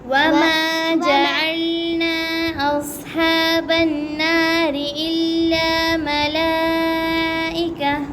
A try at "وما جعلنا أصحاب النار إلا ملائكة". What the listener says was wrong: आपने एक ये मत छोड़ी है और ये गुन्ना छोड़ा है और इधर मत थोड़ी सी की है।